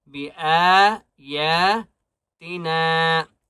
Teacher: حمزہ کو اور یا کو ایک الف کی مقدار کھینچ کر پڑھیں گے